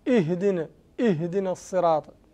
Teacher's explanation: همزة الوصلي في حالة البدء تحقق